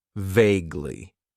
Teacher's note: It has 2 syllables, and the stress is on that first syllable